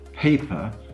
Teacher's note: it's the first syllable and not the second syllable that bears the stress